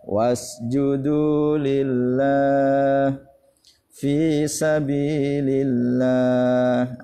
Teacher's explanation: didahului huruf yang berharakat kasrah tidak lulus harokat kasroh maksudnya Maka lamjalalah nya dibaca tarqiq atau tipis meringis